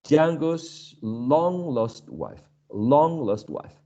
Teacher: long would be stressed and lost would be unstressed in this case